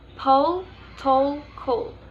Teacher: a little puff of air is released after the initial P, T, and K, making the paper move slightly. · L in each case is pronounced with the tip of your tongue up behind your top front teeth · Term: aspiration